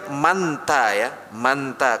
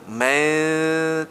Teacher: ta ujung lidah bertemu dengan dua pangkal gigi seri atas maka berdengungnya di situ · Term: ikhfa